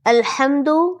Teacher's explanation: اس میں جو حا ہے وہ حلق سے نکلنے والی ہے لیکن بھاری اواز والی نہیں ہے